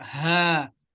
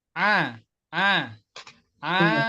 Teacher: Ha itu dengan pita suaranya dibuka. Ha. Kalau a dengan pita suara yang tertutup.